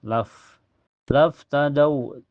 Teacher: fa mempunyai sifat hamas ya. Makhraj fa itu bibir bawah kena gigi seri atas. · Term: fa sukun mutlak